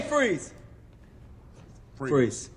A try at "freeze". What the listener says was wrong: You don't move your top lip that much. I move my top lip so it doesn't come out stern.